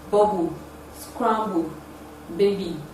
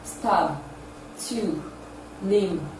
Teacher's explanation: The sound is produced with the two lips, therefore it is a voiced bilabial plosive sound.